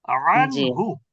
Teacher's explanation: ইজহার। যে শব্দের মধ্যে নুনটা বাংলা দন্তন্য ইংরেজি এন এর মত উচ্চারণ হবে ধরেই নিতে হবে সেখানে গুন্না হচ্ছে না